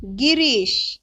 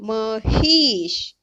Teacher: दोन सजातीय स्वर लागोपाठ आल्यानंतर त्याचा एकच दीर्घ स्वर होतो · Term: दीर्घत्व संधी